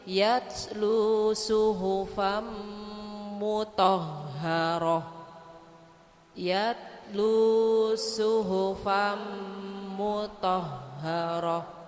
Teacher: Kalau ada tak bundar, kalau kita berhenti menjadi suara ha